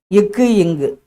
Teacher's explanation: நாவின் முதற்பகுதி அடிப்பகுதியை தொடுவதால் பிறக்கின்றன